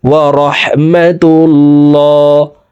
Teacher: তো প্রিয় দর্শক, দেখুন এখানে আল্লাহ শব্দের আগের হরফে পেশ আছে, এই কারণে এই লামকে মোটা করে অর্থাৎ ল বলে পড়ব